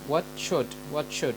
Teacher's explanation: ch sound is a very quick pronunciation of t followed by sh. To demonstrate this, say the phrase what should, very fast, and you will get the sound ch. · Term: affricates